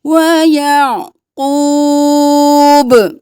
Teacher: عین کو گلے کے درمیان سے